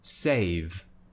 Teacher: I'm still producing a vibration in my throat I'm still using my vocal cords it's not just an unvoiced sound I'm actually making noise but it's a little bit less than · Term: voiced consonant